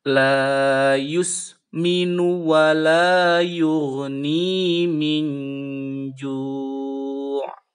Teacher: ikhfa beserta samar dan berdengung sedikit